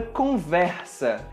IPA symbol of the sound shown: ɹ